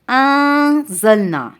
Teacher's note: اب ہم نے اخفا کرنا ہے تو ہم کریں گے، ہماری زبان نون کے مخرج کے قریب رہے گی لیکن نون کے مخرج یعنی تالو کو ٹچ نہیں ہوگی